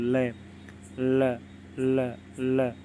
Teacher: ल बोलेंगे ना तो हमारी जीभ हमारे मसूड़ों को छूती है और हवा दोनों ओर से निकल जाती है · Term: पार्श्विक व्यंजन